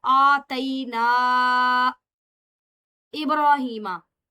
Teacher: रॉ यहाँ पर मुफखम नहीं है बल्कि बारीक पढ़ी जाएगी